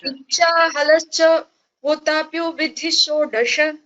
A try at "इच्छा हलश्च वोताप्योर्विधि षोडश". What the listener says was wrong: वोताप्योर्विधि षोडश रेफः अस्ति।